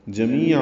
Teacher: جمیع می یا مدہ ہے، عین وسط حلق سے ادا کرتے ہوئے دو زبریں ہیں، تنوین کے بعد حمزہ آنے کی وجہ سے اظہار ہوگا.